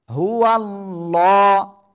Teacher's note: আল্লাহ শব্দের লামের ডাইনে জবর মোটা আওয়াজে পড়তে হবে। হু আল্লাহ, যারা লা বলবে তাদের ভুল হবে।